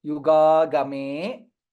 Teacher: ga is दीर्घ then the next ga is hrasva